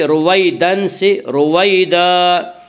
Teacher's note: رویدن، آگے آیت ہے وقف کریں گے۔ دو زبر پر وقف کرنا ہو تو ایک زبر کے ساتھ الف پڑھا جاتا ہے،